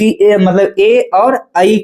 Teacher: ए और ऐ का उच्चारण स्थान कंठ और तालु से होता है। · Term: कंठ तालु